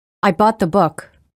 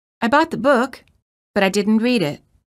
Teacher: sentence has falling intonation which indicates that the thought has ended the second sentence contains Rising intonation indicating that the thought has not ended